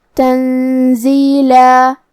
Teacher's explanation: زائی حروف الاخفاء میں سے ہے اور اخفاء کا معنی ہے چھپا دینا، تو ہمیں یہاں نون کو چھپاتے ہوئے اور غنہ کے ساتھ یہ حکم کو ادا کرنا ہے